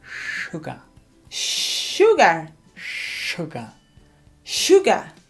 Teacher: Es como una SH y no se pronuncia la R al final.